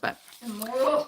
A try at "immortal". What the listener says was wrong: Immortal. You said immortal, and at first you said immoral. No, it's immortal. You say it weird. Immortal, not immortal.